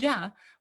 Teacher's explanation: an affricate you stop and you also fricatize the airflow